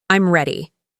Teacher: My voice goes down at the end. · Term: falling intonation